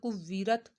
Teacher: वाव के ऊपर तशदीद है तो वाव को 2 दफ़ा पढ़ा जाएगा।